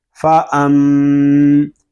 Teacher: فا زبر فا حمزہ میم زبر ام فا ام. میم شدد ہے، اس کو غننے کے ساتھ پڑھیں گے. فا ام، اس کو فا ام اس طرح نہیں پڑھیں گے، غنہ کریں گے.